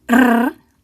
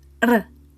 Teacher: A single R in the middle of a word or on the end of a word is a single R. To make the Spanish R sound, you flick the tip of your tongue off the bumpy ridge behind your top front teeth.